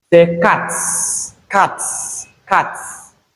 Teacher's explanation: The last sound we have in the base form of this word is t. So since t is a voiceless sound, we realize the letter S here as s. · S, that's s, becomes voiceless after t. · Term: voicing assimilation